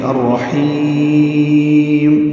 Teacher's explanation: الرحیم کی جو ہا ہے وہ لمبی ہو جائے گی، مد عارض للسکون ہوگی